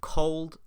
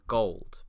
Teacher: The only distinction between these words is this sound here. Cold uses the voiceless velar plosive, while gold uses the voiced velar plosive. Because of this minimal pair, we can establish that k and g are separate phonemes in English.